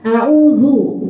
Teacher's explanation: Kalau monyong terus znya jadi tebal